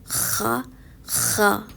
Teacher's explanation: خا حلق کے آخری حصے سے ادا ہونے والا حروف ہے. اس حروف کی ادائیگی گلے کی خراش سے پتہ لگتی ہے کہ صحیح ادا ہوا ہے.